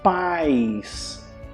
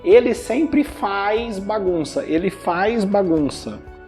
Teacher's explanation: A gente coloca um I antes da letra Z, então fica assim, ó, paz.